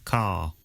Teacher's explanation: Notice that the final R sound is not pronounced in British English. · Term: R sounds